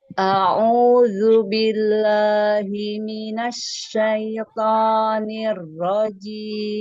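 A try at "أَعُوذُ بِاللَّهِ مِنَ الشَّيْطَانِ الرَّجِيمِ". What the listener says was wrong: Asyaiton. Keluarkan, jangan terbagi ke hidung.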